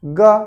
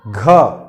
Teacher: ग हवा नहीं निकला उतना। घ, तो घ बोलते हैं तो मुंह से ज्यादा हवा निकल रहा है बाहर